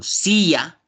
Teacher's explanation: Si yo digo, por ejemplo, silla, tiene acento. La mayor fuerza de voz de silla es sí